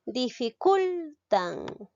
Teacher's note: Lleva la mayor fuerza de voz en la sílaba cul. Es una palabra grave.